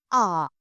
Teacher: इसको बोलने में हमारे स्वर की जो कंठ की आवाज है वो थोड़ी लंबी खींचती है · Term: दीर्घ स्वर